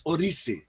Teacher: the pronunciation really is it's almost like a mixture between a D and a R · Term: D mixed with R sound